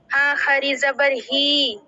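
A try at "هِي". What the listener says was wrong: ہاں کھڑی زبر نہیں ہوا، کھڑی زیر ہے.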